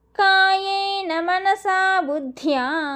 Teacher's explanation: బుద్ధ్యాలో దాకి దావొత్తు మహాప్రాణం అండర్లైన్ చేసుకొని యకారం కూడా వినిపించాలి